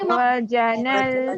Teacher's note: Saya nak minta untuk turunkan sedikit pada bunyi lam. Lam ini jangan lantunkan.